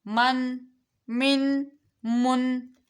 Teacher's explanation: ہم نے نون کو واضح کرنا ہے، غنّہ نہیں کرنا۔